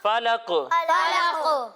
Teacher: قاف چونکہ حروف قلقلہ میں سے ہے، یعنی ان حروف میں سے ہے کہ اگر وہ ساکن ہوں تو ان کے ادا کرتے وقت آواز لوٹتی ہوئی محسوس ہوتی ہے. تو یہاں پر بھی جب ہم قاف کو ساکن کر دیں گے تو آواز لوٹتی ہوئی محسوس ہوگی.